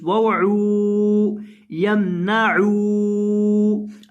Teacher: वाव साकिन है, आइन को वाव के साथ मिलाएंगे और लंबा करेंगे क्योंकि वाव मद्दा है